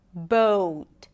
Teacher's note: notice that the O sound is changing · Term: long O